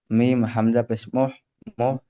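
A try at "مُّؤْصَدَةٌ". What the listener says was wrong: মুহ নই, হামজা মু, মিম হামজা পেশ মু।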